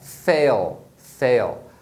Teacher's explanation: o som do AI tem som de A, e aí você pronuncia o L como dark L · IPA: /eɪl/